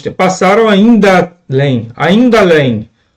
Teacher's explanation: Olha que a pronúncia vai trazer para nós. Esse ainda além traz para nós aqui a fusão entre duas vogais. A vogal final de ainda e a vogal inicial de além. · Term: crase